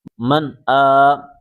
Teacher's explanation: کھڑا کو ایک الف کے برابر کھینچ کے پڑھیں